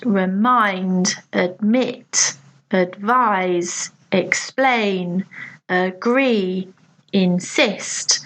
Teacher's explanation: these will have the stress on the second syllable